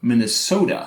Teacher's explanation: Also distinctive in all of our speakers is the final vowel in Minnesota. So instead of the schwa that you would get in my accent, Minnesota, or general American Minnesota, it's much more open.